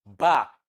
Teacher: is a voiced bilabial plosive